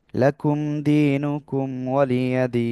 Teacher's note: এক আলিফ মাদের পরের অক্ষরে থেমে যাচ্ছে তাই তিন আলিফ টেনে পড়বো